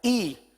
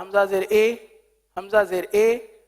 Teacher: اب گرانا یعنی آواز کو نیچے گرانا ہے، ای، تھوڑی سی بھی آواز پھیلے نہ، اگر پھیل گئی اے ہو گئی